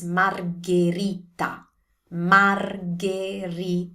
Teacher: And also the ending T, that's the most crucial part for this word. The ending T is a T sound. It's never a D sound. Don't turn this into a D.